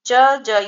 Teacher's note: च ज ये तो तालव्य है।